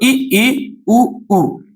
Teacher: सिर्फ ओंठ ही हिल रहे होंगे, लेकिन आपका जो जबड़ा है वो बिल्कुल भी ऊपर नीचे नहीं जाता है। सिर्फ इतनी सी जगह रहती है कि आपकी सांस निकल सके। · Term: संव्रत